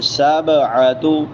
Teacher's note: با حروف قلقلہ میں سے، اس کو تھوڑا سا ہلا کے پڑھیں گے